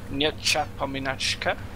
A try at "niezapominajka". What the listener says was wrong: Nie zapominajka. The J is pronounced in the other way.